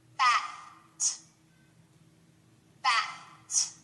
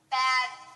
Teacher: if we change the T to a d we add our voice it changes to bad